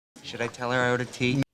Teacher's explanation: I ordered both a little flatter, lower in pitch.